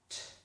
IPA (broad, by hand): t